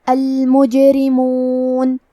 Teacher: حرف الرا کے نیچے زیر ہے تو یہاں را کا حکم ہے ترقیق. ہم حرف الرا کو پتلی آواز میں پڑھیں گے